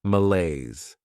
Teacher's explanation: Next is malaise. This word has 2 syllables, and the stress is on that second syllable